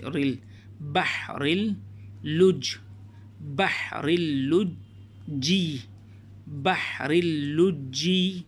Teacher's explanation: یہاں پر لام کو را سے ملا دیں گے